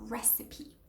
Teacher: You do pronounce the P and the E towards the end as a full syllable